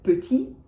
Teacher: the word petit, which if you know English, you probably know, that final T is not going to be pronounced